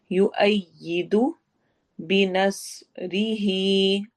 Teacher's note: नस स्वाद को मोटा पढ़ेंगे, रिही रा बारीक है, ही लंबा होगा